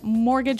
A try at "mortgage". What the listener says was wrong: Yeah, it has a T in it, but you don't pronounce it. You say mortgage.